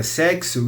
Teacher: na palavra sexo, o X já aparece com som de KS